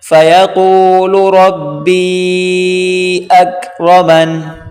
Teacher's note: را کو موٹا کریں، یہاں پر مد ہے، کھینچ کر پڑھیں